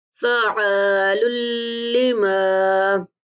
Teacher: عین مشدد ہے اس لیے یہاں پہ بھی تھوڑا سا سختی سے پڑھیں گے اور عین کو اپنے مخرج سے نکالنے کی کوشش کریں گے